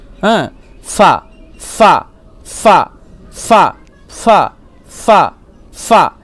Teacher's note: নিচের ঠোঁটের ভিজে অংশ এবং সামনের উপরে দুই দাঁতের আগার সাথে লাগিয়ে উচ্চারিত হয়